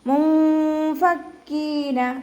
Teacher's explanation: മുശ്രികീന മുൻഫക്കീന, ഇവിടെ നൂൻ സാക്കിനയ്ക്ക് ശേഷം ഇഖ്ഫാൻ്റെ അക്ഷരമായിട്ടുള്ള ഫ വന്നതുകൊണ്ട് നമ്മൾ നൂൻ സാക്കിനയെ മറച്ചു വെച്ചിട്ട് മണിച്ചോതി കൊടുക്കുക. മുൻഫക്കീന, നാവ് മുകളിൽ തട്ടാത്ത രൂപത്തിൽ കേട്ടോ.